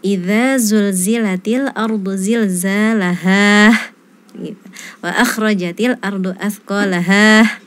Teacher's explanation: terdengar ada huruf H sukun setelah di akhir ayat. Jadi setelah huruf H itu ada seperti huruf H sukun.